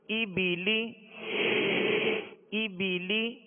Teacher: زیر کو ادا کرتے ہوئے آواز کو نیچے مکمل گرا دیں گے تاکہ مجہول پیدا نہ ہو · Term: زیر کی ادائیگی